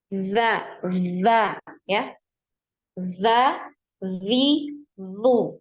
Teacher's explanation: aliran nafas huruf zal ini tertahan ya. Jadi dia tidak punya aliran nafas ya.